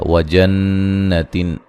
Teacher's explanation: نون مشدد پہ غنہ ضروری ہے